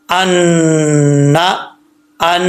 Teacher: نون مشدد یعنی نون کے اوپر شد آ جائے یا میم کے اوپر شد آ جائے تو کیا کریں گے, غنہ کریں گے 1 الف کی مقدار